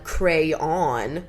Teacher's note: With two syllables where the second syllable rhymes with dawn.